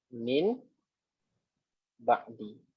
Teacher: nun ni mati bertemu dengan ba hidup. Kan, mati bertemu hidup. Jadi nun ni kita kena tukar kepada mim. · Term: iqlab